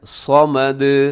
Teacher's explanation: صمد میں صاد موٹا ہے، صمد، اور اس میں بھی دال کو آخر میں ہلائیے گا۔